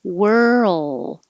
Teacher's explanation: hold the l position a little longer so the l can be heard so it's not mistaken for word